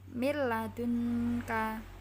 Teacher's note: disahkan serah tanwin atau dhomah tanwin bertemu huruf lam atau rok membacanya digabungkan tanpa dengung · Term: idgham billaghunnah